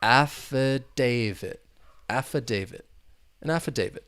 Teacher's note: there are four syllables the stress is on that third syllable